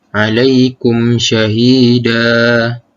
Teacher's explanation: Dan mad iwad ini terjadi apabila kita mewakafkan bacaan pada akhir kalimah yang terdapat huruf berbaris fathatain, iaitu berbaris dua di atas. Dan cara bacaannya adalah dengan menggugurkan bunyi tanwin dan menggantikan dengan sebutan fathah biasa, dan dibaca panjang 2 harakat ketika waqaf sahaja.